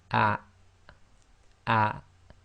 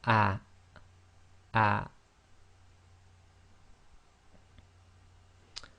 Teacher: the hamza acts as the glottal stop in Arabic, and you should feel a slight blocking of the bottom of your throat